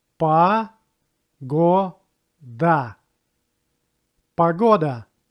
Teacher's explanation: This word has 3 syllables as well, but stress goes to second one and it will be pronounced like o.